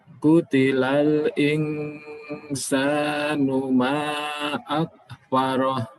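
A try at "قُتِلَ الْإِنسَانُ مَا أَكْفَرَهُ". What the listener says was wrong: Baik, mimnya dipanjangkan lagi sedikit.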